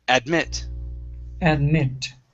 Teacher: here the stress is at the very end